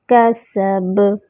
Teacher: کسب، کاف کا مخرج اقصی اللسان، سین میں جو ہے وہ سیٹی کی آواز آئے گی، اور با میں جو ہے وہ قلقلہ ہوگا۔